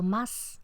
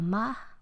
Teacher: Por eso decimos que cuando una consonante implosiva se debilita, cuando yo no articulo más, sino más, esa A previa, la A que ha quedado en posición final, o que puede quedar si llega a grado cero fonético la S, esa A es un poquito más larga o es más abierta